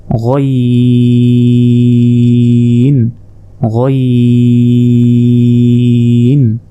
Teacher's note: হলকের শেষ ভাগ হতে গইন উচ্চারণ হয়